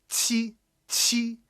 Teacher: pronounce Q to aim for the TCH sound while your tongue is touching the middle of your bottom teeth · Just make sure that you have that explosive, highly aspirated, sound to it.